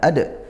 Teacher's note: ini qalqalah sughra, dibaca mantul ya